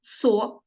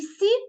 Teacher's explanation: со - твердий а сі пом'якшений